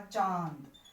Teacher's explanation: तो अनुनासिक, अनुनासिक का कैसे लिखते हैं, जैसे अगर मैंने कहा चांद, चांद बोलते समय देखो मुंह से और नाक से दोनों से हवा बाहर निकलती है